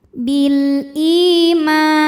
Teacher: Bil ima, ma mad tabi'i dhahiri karena ada alif didahului baris fathah, maka dibacanya panjang 2 harokat · hamzahnya bentuk alif dengan harokat kasrah bertemu ya sukun, maka dipanjangkan 2 harokat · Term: mad badal